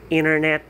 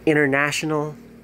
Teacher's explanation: the comparisons american accent has what we call this letter t the letter t in american accent could be silent